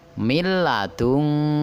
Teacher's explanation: Kemudian idgham bila gunah, milladungka, ya, yang diberi warna, tanda ikhfanya adalah huruf nun mati bertemu dengan huruf lam, dan cara membacanya melebur atau masuk ke dalam huruf lam tetapi tanpa berdengung